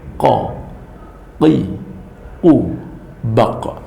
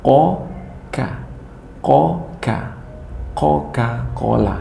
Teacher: Kalau qaf itu agak dasar, kalau ka agak keluar sedikit dari huruf qaf. Atau di kitab Kiai Basri Alwi mengatakan pangkal lidah dengan langit-langit yang lurus di atasnya agak keluar sedikit dari makhraj qaf, yaitu tempat huruf kaf.